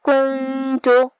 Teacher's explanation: کلمت کنت میں یہاں نون ساکن ہے، پھر حرف التا ہے، تا حروف الاخفاء میں سے ہے، لہذا ہم حرف النون کو چھپاتے ہوئے اور غنہ کے ساتھ یہ حکم کو ادا کریں گے